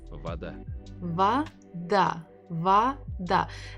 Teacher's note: he pronounces the first syllable as va, but we have vo. It's another hint that the stress is not on the first syllable. It's not an o.